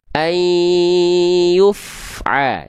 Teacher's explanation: Jadi pastikan ketika fanya dilafalkan cukup dibaca dengan bunyi konsonannya saja. Dan ketika melafalkan fa sukunnya pastikan suara dan nafasnya tidak terputus. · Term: Fa mati